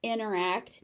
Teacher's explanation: Now, you notice when I say it as interact naturally, that first T disappears. You're going to hear that a lot in American Standard English.